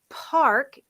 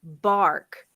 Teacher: i had a student that continued to voice the p sound